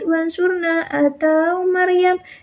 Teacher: ro dibaca tebal dinamakan tafhim